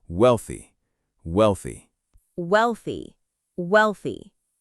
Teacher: We put our tongue between our teeth for the th sound.